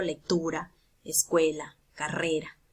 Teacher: llevan la mayor fuerza de voz en la penúltima sílaba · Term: palabras graves